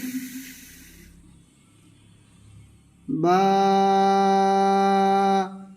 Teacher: দুই ঠোটের ভিজা অংশ থেকে